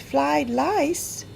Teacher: they say I make an R sound as though it is an L